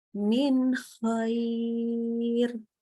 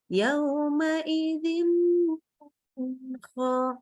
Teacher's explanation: tidak ada dengung di situ karena yang satu diproduksi di lidah, satu lagi diproduksi di tenggorokan, ya, dia dibaca jelas, idhar, disebut idhar halki karena dia apa, nunnya dibaca jelas dan keluarnya dari tenggorokan, jadi idhar halki, ya, dibaca jelas, nggak pakai tambahan gunnah, jangan didengungkan.